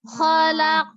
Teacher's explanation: Ini naik. Kan huruf qafnya pangkal lidahnya naik.